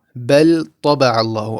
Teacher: Obviously during recitation you're not going to stop here in between these two words, but you are going to press just a little bit longer on the lam so as to not make it a full mouth